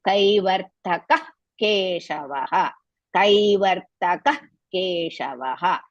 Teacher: Now, I told you, whenever you come across, after the Visarga, you come across Ka letter, you have to pronounce Ha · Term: Jihva Mulya